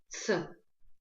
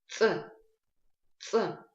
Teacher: Нам нужно произнести этот звук резко и без придыхания.